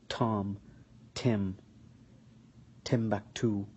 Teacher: Now the difference between the T or the T sound in the English and the TA sound in Arabic is that in the T there is an exhalation of air which you can notice when you pronounce the T.